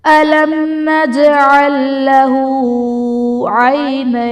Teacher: نجعل لہو میں جیم حرف قلقلہ ساکن ہے تو یہاں پر قلقلہ خوب ظاہر کریں گے · أَلَمْ نَجْعَلْ میں میم ساکن کے بعد حرف با اور میم کے علاوہ نون ہے تو یہاں پر اظہار شفوی کا قاعدہ ہوگا، یعنی میم ساکن میں ہم غنہ نہیں کریں گے · نین میں نون یا ساکن سے پہلے حرف پر زبر ہے، یہاں پر بھی یائلین کا قاعدہ ہے، اور حرف لین کے بعد عارضی سکون ہے، یعنی وقف کی وجہ سے ہم نون کو ساکن کریں گے تو یہاں پر مد لین عارض کا قاعدہ بنے گا